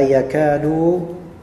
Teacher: setelah kaf ada alif mattabi'i dua harakat